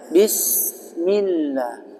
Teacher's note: sin yang tanpa 3 titik itu tarful lisan, ujung lidah menempel dengan ujung-ujung gigi sari bawah. Itu sin. Jadi bacanya jangan ditekan, jangan begitu, tapi dialirkan.